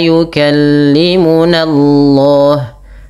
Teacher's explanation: Lafal Allah tebalkan karena di dalam tafhim yang di mana sebelum lafal Allah itu ada fathah.